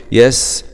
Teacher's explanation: سين سكون مع الصفير